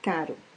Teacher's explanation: Esse Rzinho é uma consoante vibrante simples alveolar sonora.